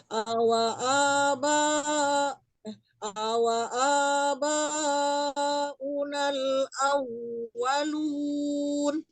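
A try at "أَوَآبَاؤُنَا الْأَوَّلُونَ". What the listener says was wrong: Ya, boleh lunya lebih dipanjangkan lun ya, banyak juga banyak juga 4 atau 5 ya.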